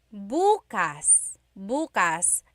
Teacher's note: emphasis is on the first syllable